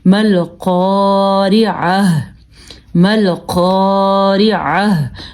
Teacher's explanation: جب یہ گول تا آ جاتی ہے تو یہ آخر میں وقف کی صورت میں ہاں بن جاتی ہے